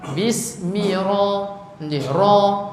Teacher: Ra dibaca dengan tafkhim.